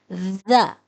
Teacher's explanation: دونوں دانتوں کے درمیان لانے سے ادا ہوتا ہے اور آواز ہے ذ۔